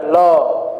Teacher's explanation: तो जब लॉ व्यंजन का आप उच्चारण करेंगे तो हमारा, जैसे आप उच्चारण करके खुद देखिए कि ल वर्ग का जब उच्चारण कर रहे हैं तो ल तालु में जाके चिपकेगी, और बगल से जब तक उच्चारण रहेगा ल का, बगल से किनारे से हवा का निष्कासन होगा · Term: पार्श्विक व्यंजन